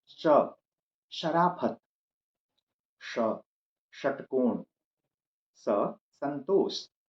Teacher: तालव्य स अर्थात जिसका तालु से उच्चारण हो, मूर्धन्य स अर्थात जिसका मूर्धा से उच्चारण हो, दंत स जिसका दांत से उच्चारण हो